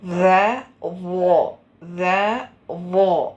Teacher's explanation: ഈ ദാല് നേർപ്പിച്ച് ഉച്ചരിച്ചാൽ ദാല്, അതേ അക്ഷരത്തിന് നല്ല ഖനപ്പിച്ച് ഉച്ചരിച്ചാൽ വോ. കണ്ട, ഒരേ മഹ്റജാണ്.